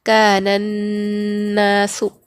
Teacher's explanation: نون پر تشدید ہے تو ہم اس کو غنہ کریں گے، یعنی آواز کو ناک میں تھوڑی دیر روکیں گے